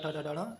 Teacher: ट वर्ग मूर्धा से बोला जाता है।